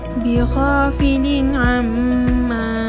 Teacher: apabila tanwin bertemu dengan ain. Cara bacaannya ialah jelas tanpa dengung. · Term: izhar halqi